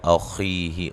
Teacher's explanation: خا کو موٹا ادا کریں